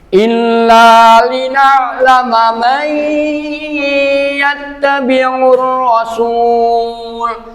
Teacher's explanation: nunnya langsung lebur kepada huruf ya dengan disertai dengung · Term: idgham bi ghunah